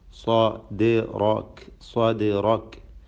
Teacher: സ്വാദിന് തഫ്ഖീം, ഇസ്തിഅലാഇൻ്റെ അക്ഷരമാണ്, പെരുപ്പിച്ചുച്ചരിക്കണം